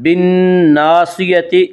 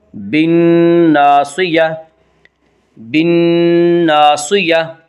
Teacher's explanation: آگے آیت ہے وقف کریں گے۔ وقف کی صورت میں گول تا ہائے ساکنہ بن جاتی ہے۔ ہائے ساکنہ یعنی وہ ہا جس کے اوپر جزم ہو۔